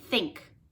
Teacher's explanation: or off so th without your voice sounds like like think see how my tongue comes between my teeth and the air goes forward · The only difference between and is your voice is on or off. So TH without your voice sounds like think.